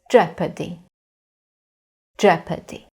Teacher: In this word, the stress is on the first syllable.